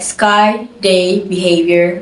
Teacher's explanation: were pronounced with full diphthongs, maintaining the same sound quality as an American speaker